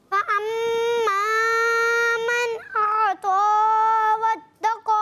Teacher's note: فاما اس میں پہلے سنیں، اس میں الف مدہ ہے تو کھینچیں گے، اور اعطا اس میں کھڑی حرکات، یہ بھی الف مدہ کے قائم مقام، اس کو بھی ایک الف کھینچیں گے، اور واتقا کا الف بھی کھینچنا ہے دوبارہ.